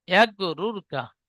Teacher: র সাকিনের ডান দিকে পেশ এসেছে, তাই রকে পুর করে পড়তে হয়।